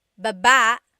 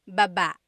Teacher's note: Emphasis is on the second syllable.